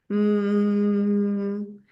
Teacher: En ese sentido, primero emito el sonido de la M, que sería mm. Luego, como la M es una nasal, quiere decir que el aire se escapa por la nariz, a diferencia de la P, que es una oral, y el aire se escapa por la boca con fuerza.